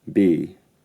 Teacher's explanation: The vowel in B is slightly centralised, even to the point I would transcribe it with this IPA character.